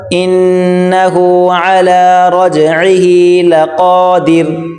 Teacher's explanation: عین کو گلے سے نکالیں زور لگا کر